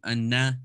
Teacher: noon is like n almost in english okay so just behind the front two teeth